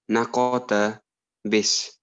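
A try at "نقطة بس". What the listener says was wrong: MashaAllah, fantastic. And your qalqalan pronunciation of the qaf was very, very good.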